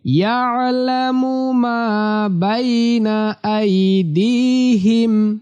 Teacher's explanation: এই আইনটা কণ্ঠনালী বা হলকের মাঝখান থেকে উচ্চারিত হবে